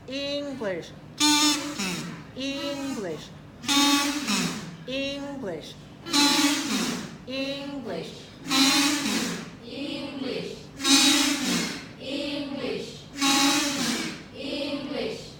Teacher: We'll go back to the list where we practice with clapping, we practice with rubber bands, and now we're going to work on pitch change to emphasize pitch change, high, low, high, low, high, low, pitch change on the same words